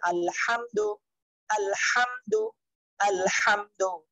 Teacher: দুই নাম্বার মাখরাজ হলকের মধ্যখান হইতে আইন হা